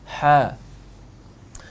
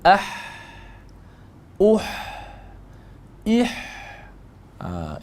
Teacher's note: itu huruf ha tempatnya di mana di tengah kerongkong ataupun tengah leher